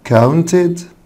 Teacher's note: بعد التاه ساوند او الده ساوند الاي دي بتنطق اد